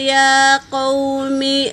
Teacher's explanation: یا پر کھڑا زبر ہے میری بہنوں تو ایک الف کے مقدار کھینچ کر پڑیں گے۔ واو ساکن سے پہلے زبر، واو لین، اسے جل پڑیں گے۔